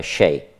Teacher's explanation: То есть в нижнебельско-икском говоре, который распространен на западе нашей республики, общетюркская «ч» перешла в мягкий шипящий звук «щ»